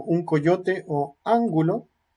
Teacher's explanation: Y si la consonante que sigue es velar, como un coyote o ángulo, se pronuncia de forma velar.